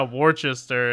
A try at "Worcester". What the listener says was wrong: You're pronouncing the R at the end. There's no R. Worcester.